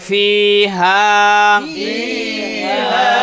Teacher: হা আলিফ জবর হা এক আলিফ টানিয়া পড়িতে হয়